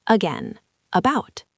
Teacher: That first A isn't an A sound, it's a schwa.